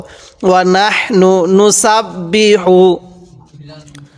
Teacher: হাটা উচ্চারণ করার সময় মুখ দিয়ে আমরা হালকা বাতাস বের করব।